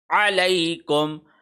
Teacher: عین حلق کے درمیان سے گہرائی کے ساتھ اس کو ادا کیا جائے گا